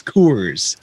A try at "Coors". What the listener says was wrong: No, there's no U in Coors. It's like core. It's like you work the core of your body out. Core.